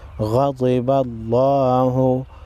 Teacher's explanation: غین حروف مستعلیہ میں سے ہے، ضاد بھی ہے، دونوں کو موٹا پڑھیں گے۔ لفظ اللہ سے پہلے زبر ہے، لفظ اللہ کو موٹا پڑھیں گے۔